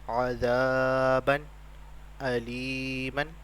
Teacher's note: غنہ نہیں کریں گے کیونکہ یہاں پر اظہار ہے